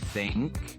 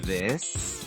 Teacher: For think, don't vibrate your vocal cords. For this, add voice.